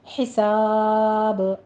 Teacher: حساب سین کی آواز میں سیٹی لانی ہے. پہلے ہا وسط حلق سے باریک ہے، پھر سین میں سیٹی ادا کرتے ہوئے الف مد ادا کیجیے